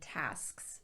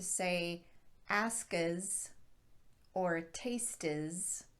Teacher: instance you don't want to say asca's or taste is because there's no vowel in between the t and the s or the k and the s